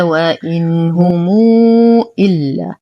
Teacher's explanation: نصل ميم الجمع الساكنة بواو مادية مشبعة لأن ما بعدها همز